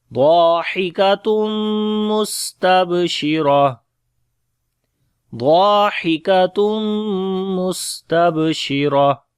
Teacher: Kaf we read in light sound.